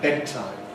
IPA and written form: ˈbedtaɪm (bedtime)